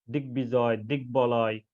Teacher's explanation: ব ফালায় ব এর উচ্চারণ বজায় থাকে যেমন দিগবিজয় তাহলে এখানে গর সাথে যে ব ফালা যুক্ত হয়েছে এই দুইটাই উচ্চারিত হয়েছে